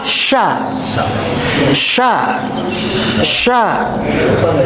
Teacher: Huruf shin, bapak-bapak semua, dia mengeluarkan udaranya begitu keras, Pak, berantakan di dalam huruf kita teh, mulut kita teh, sha. Bahkan sebelum diungkapkan a-nya, vokalnya, kita bisa mendengar suara bergeraknya udara pada rongga mulut.